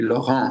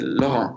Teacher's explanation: in French it would be Laurent, so the accent would be on the second syllable. But in Luxembourg, we say Laurent, so it would be on the first one, which is more like the German way, because they always put them in the first syllables.